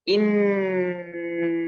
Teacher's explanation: Gunnah yang dibaca dengung dengan sempurna, ya, dengan benar-benar kuat gitu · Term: gunnah musyaddadah